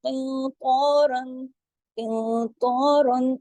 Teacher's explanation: موٹا اخفا ہوگا، ناک میں آواز جائے گی